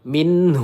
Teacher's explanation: nun sukun bertemu ha izhar halqi. Kita baca dengan jelas tidak dipanjangkan atau didengungkan.